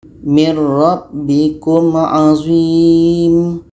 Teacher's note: Bighunnah ini kita baca secara dengung bihun Nah kita dengungkan sedang idgham bilagunnah ini tidak ada dengung · Bunyi nun hilang masuk kepada ra dan tidak ada dengung.